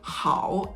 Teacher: tone 3 just ends up being kind of like a quiet thing that ends and goes up slightly